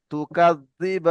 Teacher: হ্যাঁ, যদি হরুফে মাদে আমরা দাঁড়াই, দেখেন এখানে এই বাল জবর বা, এখানে আমরা দাঁড়াবো, তো যখন এই হরুফে মাদে গিয়ে দাঁড়াবো, তখন তার পরের যে অক্ষরটি থাকবে, শেষ অক্ষরটি, হরুফে মাদের পরে শেষ অক্ষর হবে, তো শেষ অক্ষরটি আমরা সাকিন করে হরুফে মাদকে 3 থেকে 4 আলিফ পরিমাণ টান দেবো। যেমন তুকাদ্দিবান। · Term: মাদ্দে আরিজ ওয়াকফি